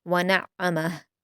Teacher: इसमें आप आइन को हलक से भी अदा करेंगे और सख्ती के साथ भी पढ़ेंगे। वक्फ़ करते हुए आपको हा की उल्टा पेश को साकिन में बदल देना है।